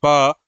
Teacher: तो ये दोनों होठ क्या हो रहे हैं? आपस में मिल रहे हैं। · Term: ओष्ठ व्यंजन